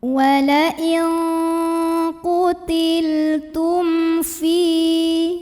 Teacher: mim sukun ini dibunyikan dengan idhar atau jelas. Bunyi M-nya jelas, tidak perlu ditahan. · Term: idhar syafawi